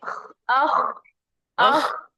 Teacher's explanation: خ जहां से गले से खरखराहट पैदा होती है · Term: खौ का मखरज